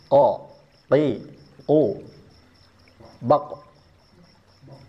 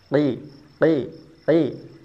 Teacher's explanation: Mau fathah ataupun mau kasrah tetap pangkal lidahnya harus dinaikkan karena memang makhrajnya di situ. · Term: huruf qof